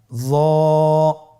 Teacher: জিহ্বার আগা, সামনের উপরের 2 দাঁতের আগার সঙ্গে লাগিয়ে উচ্চারিত। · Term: মোটা হরফ